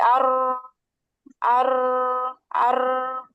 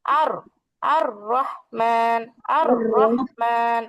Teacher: আমরা জিহ্বাটা উল্টাবো, কম্পনটাও হবে, কিন্তু সেটা অল্প অল্প, যতটুকু প্রয়োজন। যজম দিতে গেলে ঠিক যতটুকু কম্পন হয়, মানে অতিরিক্ত ইচ্ছাকৃত ভাবে যেন না দেই, সেটা খেয়াল রাখবো এই হরফটা পড়ার সময়।